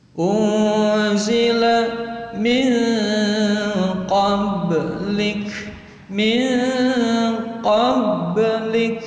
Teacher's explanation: Nun sukun atau tanwin bertemu dengan huruf qaf, itu adalah ifa hakiki. Dia cara membacanya mendengung samar panjang 2 harokat.